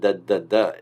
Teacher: when you do nnn the tongue is in the same place where the d d d is right and this is what's called a partial assimilation so a